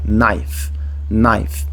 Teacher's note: não vai ser naif ou K naif eu não vou pronunciar nem a letra k no começo e nem a letra e no final